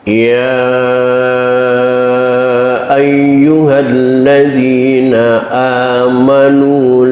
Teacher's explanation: Yang perlu diperhatikan dalam bacaan tadi diantaranya adalah ya mad jaiz munfasil. Panjangnya boleh 2, boleh 4 sampai 6 harokat.